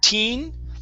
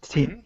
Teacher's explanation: Let's use a short I sound. So instead of teen, it's tin.